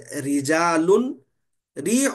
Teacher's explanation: را کو زیر ہو تو باریک یعنی مرقق پڑھنا چاہیے